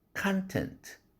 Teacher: 그런데 이것이 명사로 썼을 때 content 할 때 아라는 음절이 tent 할 때 에라는 음절보다 길어진다는 것이죠